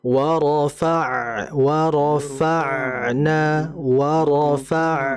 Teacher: huruf ain ini memiliki sifat yang disebut dengan sifat tawassut atau dia dialirkan hurufnya. Jadi kita alirkan warofa warofa warofa. · huruf ain ini merupakan huruf yang dalam pengucapannya dia keluar dari tenggorokan tepatnya bagian tengah, ya. Dan kemudian huruf ain ini memiliki sifat yang disebut dengan sifat tawassut atau dia dialirkan hurufnya.